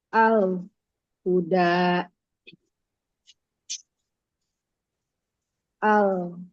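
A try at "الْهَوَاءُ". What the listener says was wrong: Kurang ngalir lamnya al-hawa.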